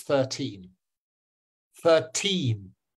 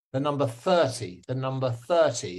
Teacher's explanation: if you hear the second syllable being stressed then it means it's 13